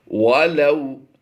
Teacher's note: ولو لام واو زبر لو، واو لین کا قاعدہ ہوتا ہے، یہاں پر لمبا نہیں کر سکتے ہم